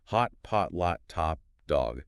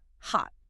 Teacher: Unlike a front of the mouth ah, This short O resonates way down in the pharynx. The back of the tongue drops. · mechanically, your mouth needs to open up into something much closer to an ah sound